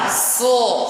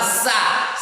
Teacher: Kalau sod pangkal lidah menukik dan langit-langit pun menukik karena dia itbal. Maka kalau sin kondisi lidah atau bagian yang normal kita baca sa. Kalau sod dia tidak normal, harus tetap powernya so.